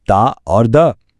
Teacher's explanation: जबान और दांतों की मदद से अदा होने वाले लिसानी हरूफ